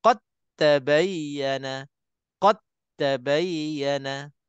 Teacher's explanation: Tapi jelas-jelasnya dalam Al-Quran dia ada sabdu atas huruf ta. Jadi dah tentunya terus daripada qa lompat masuk dalam huruf ta terus. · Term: idgham mutajanisain kamil